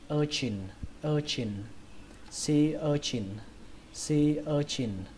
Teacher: Còn cái từ thứ hai này các bạn đọc là urchin, urchin, trọng âm của nó rơi vào âm đầu tiên, âm ơ, urchin, và âm chờ này là âm chờ bắn hơi các bạn nhé